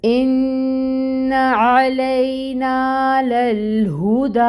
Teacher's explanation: حمزہ کو محقق ادا کریں گے، کلیئر ساؤنڈ آئے گی ای کی · نون مشدد ہے، نون مشدد کا مطلب ہے کہ اس پہ غنہ ہوگا۔ ناک میں نون کی آواز کو 2 حرکت کے برابر 2 کاؤنٹس کیے برابر ٹھہرائیں گے، لیکن یہ خیال رہے کہ جو زبر کی حرکت ہے، فتحہ ہے، وہ 1 کاؤنٹ ہی ادا کی جائے گی، اس حرکت کو لمبا نہیں کرنا۔